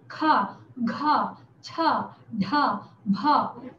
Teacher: तो इनको बोलते समय अपना श्वास ज्यादा लगता है, इसलिए इसको महाप्राण बोलते हैं